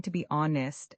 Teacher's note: You're saying to be honest and that H completely disappears.